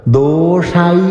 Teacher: ഷൈ അലപം ശക്തി കൊടുത്തു ഉച്ചരിച്ചോളൂ മഹാപ്രാണ അക്ഷരം തന്നെയാണ്